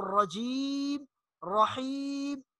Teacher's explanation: میم کو آخر میں دونوں ہونٹوں کو ملانا ہے